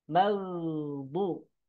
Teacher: Huruf dot keluarnya dari sisi lidah dengan gigi geraham. Gigi geraham atas ya.